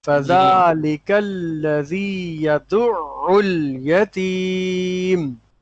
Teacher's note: فذالک الذی یدع عین کے اوپر تھوڑا ٹھہریں گے کیونکہ تشدید لگی ہوئی ہے